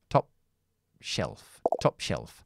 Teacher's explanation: Cierro la boca para la p pero no lo exploto porque tengo que hacer top shelf top shelf helda helda enlazamos